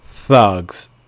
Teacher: Also note that the S at the end of the word is really pronounced like a Z.